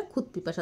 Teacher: ক খ ত থ বা প ফয়ের মতো অঘোষ ধ্বনির প্রভাবে ঘোষ ধ্বনি দ ধ বদলে অঘোষ ত ধ্বনির রূপ নিচ্ছে